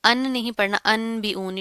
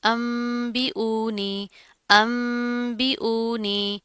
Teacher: जब नून साकिन के बाद बा आ रहा हो तो हम वहां पर मीम पढ़ते हैं